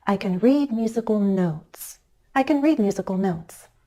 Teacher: my pitch changes on the word notes that's the final content word which makes it the focus word of the sentence